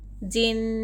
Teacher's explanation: خود سے، اور نون پر اگر میم پر تشدید رہا تو تھوڑی دیر آواز کو ناک میں چھپا کر غنہ کرنا چاہیے